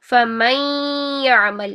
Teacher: नून की आवाज़ को या के अंदर मर्ज करना है और ये 50-50% दोनों की आवाज़ आनी चाहिए, नून की भी और या की भी। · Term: इदगाम माल गुन्ना